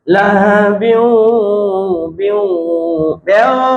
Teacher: এমন বিউ নাকে নিতে হবে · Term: গুণনা